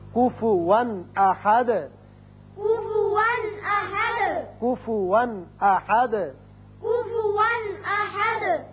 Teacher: یہاں کفون 2 زبر تنوین ہے لیکن آگے حمزہ بشکل الف آ گیا جو کہ حروف حلقی میں سے ہے، لہذا یہاں اظہار حلقی ہوگا